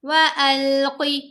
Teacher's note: آگے پڑھتے ہیں وَأَلْقِ مَا فِي يَمِينِكَ تَلْقَفْ مَا صَنَعُوا إِنَّمَا صَنَعُوا كَيْدُ سَاحِرٍ وَلَا يُفْلِحُ السَّاحِرُ حَيْثُ أَتَى وَأَلْقِ قاف کو موٹا پڑھیں گے، قاف کے نیچے زیر ہے لیکن لمبا نہیں کرنا، وَأَلْقِ ایسے نہیں کرنا، قاف کی آواز چھوٹی آواز ہوگی۔